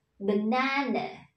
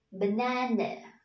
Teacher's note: Dấu phẩy ở trên đầu đây thì chúng ta sẽ nhấn trọng âm vào âm tiết thứ hai, tức là chúng ta sẽ đọc cao giọng hơn các con nhé.